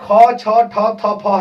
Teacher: ख छ ठ थ फ है ये महाप्राण है, इसमें जो हवा थोड़ा सा ज्यादा निकलती है। फिर जो है अल्प प्राण ये है पांचों, ये पांचों जो है महाप्राण है, फिर अल्प प्राण।